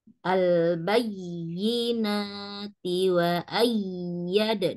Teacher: y-nya ada dua huruf karena dia bertasdid. Al-bayyinati wa ayyad ditekan ya Umi ya, tapi nggak dipanjangkan, hanya ditekan.